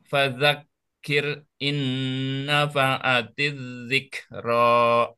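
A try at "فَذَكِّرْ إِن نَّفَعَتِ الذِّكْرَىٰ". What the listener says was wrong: Oke, innanya kurang tahan sedikit lagi Pak. Nah, cuman di sini fadzakirnya. Fadzakir. Nah, di sini huruf ro itu pun juga termasuk tawasud ya, sedikit ngalir. Fadzakir in, jadi tidak terputus.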